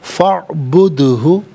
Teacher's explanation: دال ساکن ہے لیکن حرف قلقلہ ہے تو آواز لوٹتی ہوئی محسوس ہونی چاہیے۔ فاعبد ہو، فاعبد ہو غلط، فاعبد ہو۔